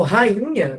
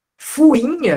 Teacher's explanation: Hiato, quando tem NH do lado, fica nasal. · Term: som nasal